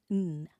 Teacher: And then this one sounds like n. This is alveolar, meaning that your tongue tip touches just behind your teeth.